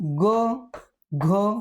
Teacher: तो उच्चार आपल्या कंठापासून होतो आपल्या कोमल तालू पासून होतो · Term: कंठ वर्णामध्ये